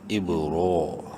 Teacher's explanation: رو کھڑی زبر رو، کھڑی زبر کی وجہ سے ایک الف برابر لمبا کریں گے اور زبر کی وجہ سے اس کو منہ بھر کے بھی پڑھیں گے